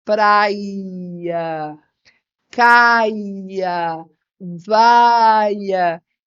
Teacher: acaba acontecendo a iod né que é esse alongamento do i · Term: iode